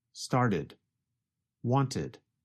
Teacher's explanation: With the first examples, the verbs started and wanted, you can hear the extra syllable id.